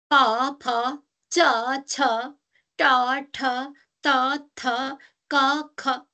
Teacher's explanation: फ च छ ट ठ त थ क ख सबैमा अंगहरुको स्पर्श भएको हुनाले यी स्पर्श भए